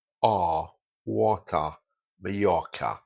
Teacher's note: So generally, in received pronunciation, the R's dropped off.